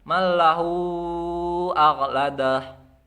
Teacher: Ukuran panjang dari mat silah kubro ini 4 sampai 5 harokat. Yang diutamakan adalah 4 harokat.